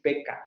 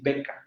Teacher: el oclusivo bilabial sordo y el oclusivo bilabial sonoro